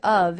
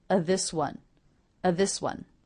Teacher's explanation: the word of is simply pronounced uh